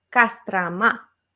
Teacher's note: Porque A, la última, tiene el acento. Entonces todas las otras O son como de flojera. No las pronunciamos bien. Entonces es algo en promedio, como una A.